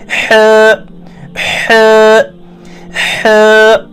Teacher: ہاؤک مخرج چھُ وسط حلق، یعنی حلق کا درمیانی حصہ